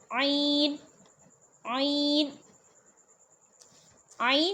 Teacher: عین جو ہے یہ وسط حلق سے ادا ہوتا ہے، ٹھیک ہے، حلق کے درمیان والے حصے سے ادا ہوتا ہے، ٹھیک ہے، اس چیز کا آپ نے خیال رکھنا ہے۔